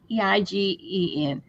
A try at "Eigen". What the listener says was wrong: it's German, and the E is silent. So it's pronounced Eigen.